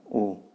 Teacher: जब आप ऊ बोलते हैं तो दोनों ऊपर और नीचे के ओठ आपस में स्पर्श करते हैं, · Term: ओष्ठ वर्ण